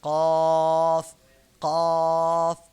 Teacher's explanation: চার নাম্বার মাখরাজ জিহবার গোড়া তার বরাবর উপরের তালুর সঙ্গে লাগাইয়া দুই নুক্তাওয়ালা কফ